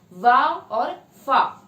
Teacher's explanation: तो जिन ध्वनियों के उच्चारण में नीचे के होठ और ऊपर के दांत आपस में टकराते हैं और ध्वनि का उच्चारण होता है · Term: लेबियोडेंटल